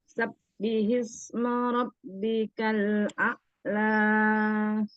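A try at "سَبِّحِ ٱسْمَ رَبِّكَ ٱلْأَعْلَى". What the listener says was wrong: Jangan ditebalkan sini, jangan sabbihis. Biasa aja.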